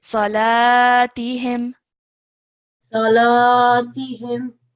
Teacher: you forgot to stretch the lam sound out for 2 seconds